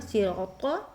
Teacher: جب ہم را کو پر کریں گے اب وہاں خالی الف ہے تو ایک الف کی مداد جب ہم کھینچیں گے تو اس کا الف بھی پر ہوگا